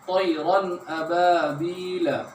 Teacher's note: نون ساکن یا تنوین کے بعد حروف حلقی کے 6 حروف حمزہ، ہا، عین، حا، غین، خا میں سے کوئی حرف آئے تو نون ساکن اور تنوین کو ظاہر کر کے بغیر غنہ کے جلدی پڑھیں گے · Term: اظہار